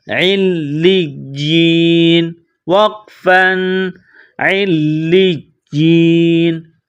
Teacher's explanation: جب وقف کریں گے، سٹاپ کریں گے تو نون کو سائلنٹ کریں گے